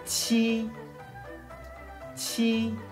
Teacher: chúng ta cần phải bật mạnh hơi ra. Người Việt Nam rất thường hay không bật hơi, cho nên là người Trung Quốc sẽ không hiểu chúng ta nói gì đâu.